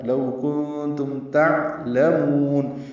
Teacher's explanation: لو باولین ہے، ہونٹوں کو نہ تمام گول کریں گے، آگے لائیں گے. کنتم میں اخفا ہے، نون ساکن کے بعد تا آنے کی وجہ سے، میم ساکن پہ اظہار ہے، عین ساکن پہ بھی اظہار ہے.